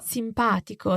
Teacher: So if we divide this adjective in syllables, the stress is on pa, simpatico. So the stress is not on the second to last syllable.